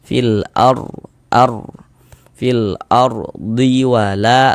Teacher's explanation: huruf ra sukunnya dibaca tebal, dibaca tafkhim, sehingganya pangkalisan kita naik terangkat ke atas ketika kita mengucapkannya.